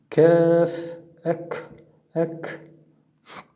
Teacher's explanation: Тіліңіздің шамамен арт жағы, үстіңгі жағы, сәл арт жағы және үстіңгі жағы жақындайды.